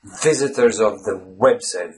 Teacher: the sound has to alternate between v and w